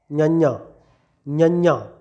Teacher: ਬਸ ਉਸੇ ਤਰੀਕੇ ਬੋਲਿਆ ਜਾਵੇਗਾ ਜਿਵੇਂ ਚੱਚਾ ਬੋਲਿਆ ਜਾਂਦਾ ਉਸ ਤਰ੍ਹਾਂ ਨਿਆਂ। ਆਵਾਜ਼ ਨੱਕ ਰਾਹੀਂ ਕੱਢਣੀ ਹੈ